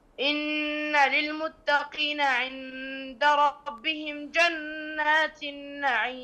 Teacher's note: عندنا هنا إخفاء، نون ساكنة وبعدها دال